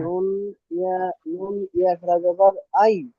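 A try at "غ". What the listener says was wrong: না না না, নুন নয়, উচ্চারণ চিনতে সমস্যা আছে। ওটা গইন খাড়া যাওয়ার গ।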